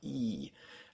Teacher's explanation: the German e is a bit closer to the front of the mouth